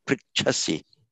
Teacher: you need to get that puff of breath for the huh, which for some reason you've dropped in Italian.